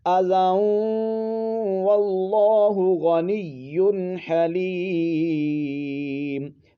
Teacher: زال کے اوپر جو دو زبر ہیں، یہ نون تنوین ہے، اس کو آپ نے واو کے ساتھ ملا دینا ہے، واو میں ملا دینا ہے، اس کو ادغام یرملون کہتے ہیں۔